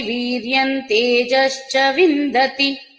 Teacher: నకారం తీసుకుంటాం వీర్యంలో ఉన్న అనుస్వరం